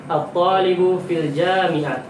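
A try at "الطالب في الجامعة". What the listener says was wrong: Nggak boleh sukun, sebutkan semua harakatnya. Fil jami'ati. Jami' khata.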